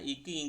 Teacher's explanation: அடி நாவோட அடி அண்ணத்துல மோதுறதுனால வர்றதுதான்